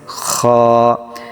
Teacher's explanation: খ এবং হলকের শেষ ভাগ হতে উচ্চারিত হবে, খ একটু মোটা হবে,